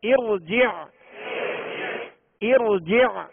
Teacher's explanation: اب یہ جو زیر ہے حمزہ کے نیچے یہ عارضی زیر ہے، لہذا را ساکن سے پہلے عارضی زیر ہو تو را کو پر پڑھیں گے